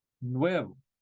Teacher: in most Spanish-speaking countries the V and the B are the same sound